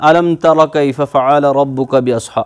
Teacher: آپ سورہ فیل پڑھتے ہیں الم تر کیف فعل ربک باصحاب, الم تر, دیکھیے الم تر میم ساکن کے بعد تا ہے, نہ با ہے نہ میم ہے, تو جتنے بھی لیٹرز باقی رہ جاتے ہیں با اور میم کو چھوڑ کر, وہاں پر آپ کو کرنا ہوتا ہے اظہار میم ساکن. میم ساکن کی جو آواز ہے اس کو باہر نکالنا ہوتا ہے, اس کو ناک میں چھپانا نہیں ہوتا ہے